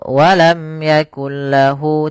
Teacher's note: tidak ditahan tapi masuk ke huruf lam karena dia idgham. Kemudian idgham bila gunnah juga ini dari segi kesempurnaannya kita namakan dengan idgham kamil, yaitu masuk secara keseluruhannya.